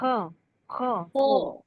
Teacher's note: softly نہیں بولے خا، اس کو وہ خرخراہٹ آئے گی